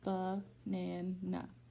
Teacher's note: But only one is stressed, and the other 2 are unstressed and have a schwa sound.